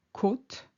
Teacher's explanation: For instance, côte, which is the coast, or rib, has a longer O, a more closed O sound compared to cote, which is quota or rating.